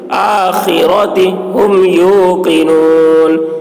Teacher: خا آخرتی، آخرتی. را کی آواز موٹی ہوگی